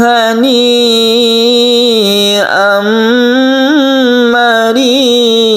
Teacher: Kemudian hani ini adalah mad wajib muttasil, kemudian ada idgham bi gunnah, mad wajib muttasil lagi yang ditutup dengan mad iwad. Jadi mari ini lebih panjang dari a ya. A ini 1 alif saja, tapi kalau mari ini adalah 2,5 sampai 3 alif